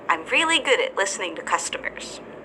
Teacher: notice how her intonation falls at the end of the statement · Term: falling intonation, Falling intonation